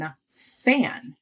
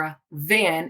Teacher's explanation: f and v, which are similar sounds. And my mouth is doing the same thing, but we put our hand on our throat to feel the vibration